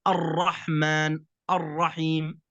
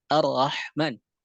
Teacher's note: Yang pertama adalah ketika dalam keadaan tebal, maka ra difathahkan, maka dia ditebalkan. Ulangi, tebal ketika ra dalam keadaan fathah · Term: الراء المفخمة